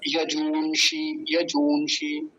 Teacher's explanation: यजूंषि, यजूंषि पहली बात तो दीर्घ ऊकार है, बड़े ऊ की मात्रा है, और दूसरी बात क्या है, मूर्धन्य शकार पर ह्रस्व इकार, छोटे ई की मात्रा